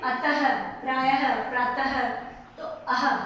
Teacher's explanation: विसर्ग का उच्चारण जब करते हैं तो ह का उच्चारण होता है